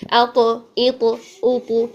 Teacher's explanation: اطباق ہونے کی وجہ سے زبان کے درمیان اوپر کی جانب اٹھتا ہے تو اس میں قلقلہ کی اتنی زیادہ ڈائریکشن ہمیں شو نہیں ہوگی، البتہ ہم کرنے کی کوشش تو کریں گے، اط، اط، اط، ٹھیک ہے۔